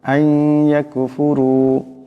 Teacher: রার উপর পেশ আছে, আওয়াজটাকে মোটা করিয়া পড়তে হবে